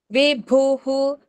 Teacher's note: భు వచ్చింది కాబట్టి హు అని పలికాము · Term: విసర్గ